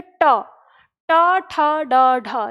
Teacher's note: जैसे आप ट का उच्चारण करेंगे तो आपकी जीभ जिस स्थान को छूती है मुड़कर, वही स्थान क्या कहलाता है? मूर्धा कहलाता है।